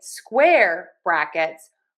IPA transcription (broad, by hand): ˈskwɛr ˌbræk.ɪts